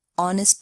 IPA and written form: ˈɒnɪst (honest)